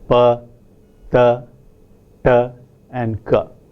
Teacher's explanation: To give you an example of how the principle is used, let us say that a language has 4 voiceless plosives occurring in the position of bilabial, dental, retroflex and velar